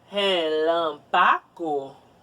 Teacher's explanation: relâmpago lan é a sílaba tônica